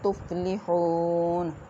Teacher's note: وَاتَّقُوا اللَّهَ لَعَلَّكُمْ تُفْلِحُونَ، قاف کو پورا ادا کیا جائے گا، لفظ اللہ کی لام کو موٹا ادا کیا جائے گا اور تفلحون میں واو ساکن ہا کے اوپر پیش واو مدہ، اس کو ایک الف کے برابر ہم لمبا کریں گے